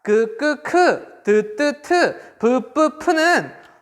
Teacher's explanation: 공기의 흐름을 완전히 막았다가 터뜨리면서 내는 소리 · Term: 파열음